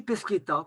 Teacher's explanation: le H expiré a fait que automatiquement, le D de Pesquet se transforme en T. On n'écrit plus le H, mais on garde le T.